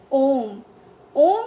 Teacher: स्वर के उच्चारण में दीर्घ स्वर से भी अधिक समय यानी तीन मात्राओं का समय लगता है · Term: प्लुत स्वर